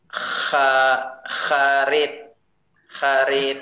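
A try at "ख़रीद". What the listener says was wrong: Kharit ya, benar.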